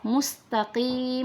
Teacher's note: huruf q bukan Kaf mustaqim Walaupun dia kasrah dia harus memilik tetap memiliki sifat istila yaitu tebal